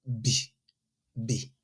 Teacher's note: when you pronounce B, the only release of air comes from the middle of your mouth